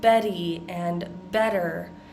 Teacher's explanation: So that double T, it's not exactly making a D and it's not exactly making a T sound. It's somewhere in between. And we're going to make that sound by hitting our tongue on the roof of our mouth.